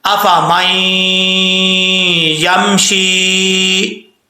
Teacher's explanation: شین کے بعد یا ہے، ایک الف کی مقدار اس کو لمبا کریں گے، اور اگر لمبا نہیں کریں گے تو حروف مدہ جو ہے وہ صحیح طریقے سے ان کا حق ادا نہیں ہوگا، تو ایک الف کی مقدار لمبا کرنا اس کو لازمی ہے.